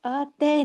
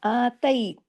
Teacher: یائی لین کی آواز میں موڑ پیدا ہوتا ہے نرمی سے